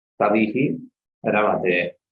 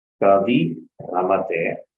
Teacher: in place of Ikara, we get the Dirgha Ikara